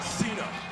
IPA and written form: ˈsiːnə (Cena)